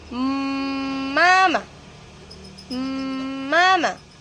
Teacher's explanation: Kaya habang nagsasalita ka, may hangin na lumalabas sa ilong.